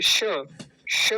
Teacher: तालव्य मतलब तालू से बोला जाता है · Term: तालव्य सकार